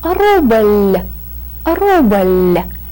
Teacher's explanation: Ruble ends in a very light, very soft L sound. And to show that this L gives us a very light and soft sound, we put the soft sign on this word.